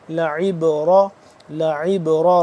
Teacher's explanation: बा साकिन है, इसके आवाज़ को पलटा कर यानी हिलाकर कलकला करके पढ़ेंगे